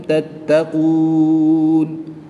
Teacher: واو مدہ کے بعد نون کے اوپر زبر ہے، وقف کی حالت میں نون کی زبر کو ساکن کر کے پڑھیں گے اور وقف کی حالت میں یہاں پر مد عارض ہوگی تو اسے 2 سے 3 الف تک کھینچ کر پڑھیں گے